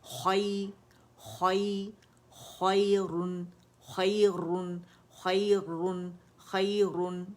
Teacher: یہ خوا موٹا لیٹر ہے تو اس کی موٹائی کو برقرار رکھیں گے